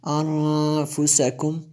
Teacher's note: نون ساکن کے بعد فا حروف اخفا میں سے ہے، یہاں پہ اخفا ہوگا جی، اس لیے میں نے غنہ کیا